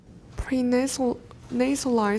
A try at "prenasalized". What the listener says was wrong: Pre-nasalized, they're both stressed.